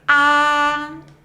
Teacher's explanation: The first tone, A, is high and flat, just like when dentists ask you to open your mouth.